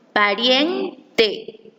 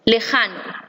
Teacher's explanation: En la segunda palabra, lejano, la sílaba tónica es ja. Notamos que en la sílaba rien existe una mayor duración que en la sílaba ja.